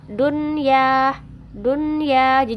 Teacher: enggak ada samar-samar enggak ada dengung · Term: izhar